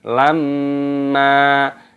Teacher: mim tasdid dibaca gunnah berdengung, makanya didengungkan lamma, dibaca lamma, jangan dibaca lamman, salah.